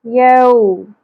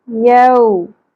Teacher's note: واو ساکن حرف لین ہے، اس کو نرمی سے ادا کریں گے۔ یو، یو نہیں پڑھنا، ٹھیک ہے۔